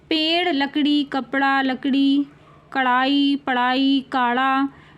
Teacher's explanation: जीभ ऊपर उठकर झटके से नीचे की ओर जाती है। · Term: ताड़न जात ध्वनि